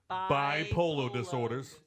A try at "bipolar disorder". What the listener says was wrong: It sounded like you were saying like a bipolar person's daughter. That's what I heard.